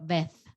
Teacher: But in Spain, when you have Z, it sounds like th, so vez.